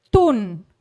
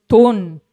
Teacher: the word ton with high pitch which means moon versus ton with low pitch low rising pitch which means thorn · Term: high tone